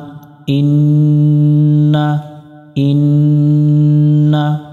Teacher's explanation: নুনের উপরে তাসদিদ এই নুনে গুন্না করা ওয়াজিব